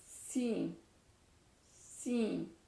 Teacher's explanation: دانت قریب آ جاتے ہیں اور نچلی دانتوں کی جڑ سے زبان لگ کے اوپر کو جاتی ہے